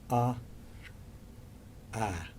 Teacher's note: but the the next bit of the tongue comes up ah the lips spread and there's that kind of little bit of tension